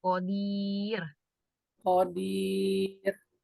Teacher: terus kemudian dibaca waqaf jadi Mad Arid lissukun ya agak panjang ya